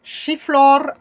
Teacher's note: Chiflor avec le R roulé français